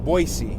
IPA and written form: ˈbɔɪsi (Boise)